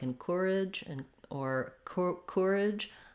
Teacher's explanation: you will sometimes hear people say the word courage and encourage with a little more of an or sound